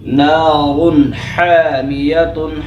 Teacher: ہا centre of the throat سے